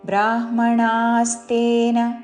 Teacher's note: రాణిలో పలికే ణ దీర్ఘముతో దాని మీద ఆఘాత